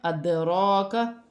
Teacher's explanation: را پر کھڑی زبر ہے، ایک الف کی مقدار کھینچ کر بھی پڑھا جائے گا · دال ساکن ہے، ادراکا، اسے قلقلہ بھی ہوگا ، اور را پر کھڑی زبر ہے، ایک الف کی مقدار